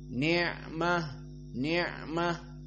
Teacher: ain hukumnya jahr karena termasuk dari sifat aljahr maka Di saat disukunkan dia tidak keluar nafas